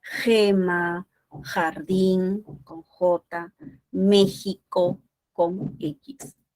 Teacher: Luego tenemos la fricativa velar sorda, ¿no? La J. Bueno, esa J tiene tres formas de representación.